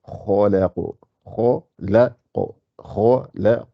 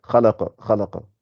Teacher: Il faut gonfler le kha, amincir le lam et gonfler le qa.